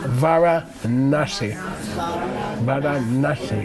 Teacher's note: So, Na means retroflex. Twist your tongue back.